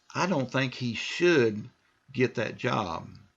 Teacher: so now I'm stressing should